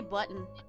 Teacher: I say button and I say button like with a D